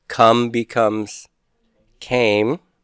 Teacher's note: we're just changing the vowel but we're not adding the T or D sound at the end